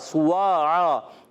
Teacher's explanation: سین کی پیش ادا ہوگی سیٹی کے ساتھ، اونٹ گول ہو جائیں گے، واو الف زبر وا، المدہ واو بھی ہے اور المدہ بھی ہے، واو پر بھی اونٹ گول ہو جائیں گے، دو زبر کی تنوین کو الف سے بدلیں گے وف کی صورت میں۔